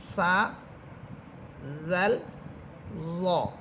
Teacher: জিহ্বার আগা সামনের উপরে দুই দাঁতের অগ্রের সাথে লাগবে। জিহ্বার অগ্রভাগ সামনের উপরের দুই দাঁতের আগার সাথে বা অগ্রভাগের সাথে লেগে তিনটি হরফ